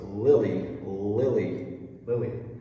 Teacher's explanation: So this is a light L again, Lily. You have light L going into the dark L, going into the light L.